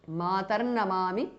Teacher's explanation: ద విసర్గ changes to రేప · the Visarga changes to Repha. Namami, Matarnamami because of Sandhi.